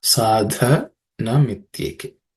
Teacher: The third word, sa dha. The dha is fourth letter in the third varga or third class of consonants, so it has to be aspirated.